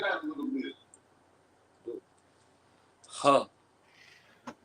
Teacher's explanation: it's gonna sound like a rough H mixed in with a rough K. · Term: guttural sound